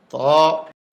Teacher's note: জিহ্বার আগা উপরের দাঁতের গোড়ায় ভিতর দিয়া ধাক্কা দিয়ে মুখ খুলে দিবে